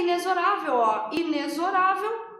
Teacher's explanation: Pessoas, não é inexorável como muitas vezes a gente ouve por aí. A pronúncia correta dessa palavra é inexorável. Aquele X tem som de Z.